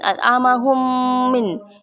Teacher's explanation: Idgham mutamasilain atau idgham mimi karena ada huruf mim bertemu dengan huruf mim. Cara membacanya dimasukkan dengan mendengung